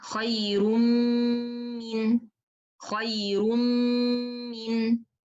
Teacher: I will stretch the Gunna, Mim followed by long Gunna.